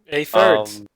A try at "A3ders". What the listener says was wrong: There's no R.